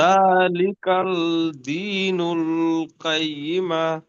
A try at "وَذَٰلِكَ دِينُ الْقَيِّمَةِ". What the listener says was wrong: ওয়াজালিকাল বলেছেন, এখানে কাফের পরে আলা লাম আছে কি এখানে করতে হয়? নুল এখানে টান হয়ে যাচ্ছে, টান হবে না। জি না, যখন অ সাকিনের ডান দিকে পেশ আসবে তখন ও মাদ্দা হবে।